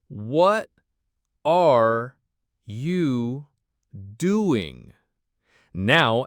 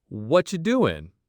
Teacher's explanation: In casual American English, what are you often sounds like whatcha? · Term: connected speech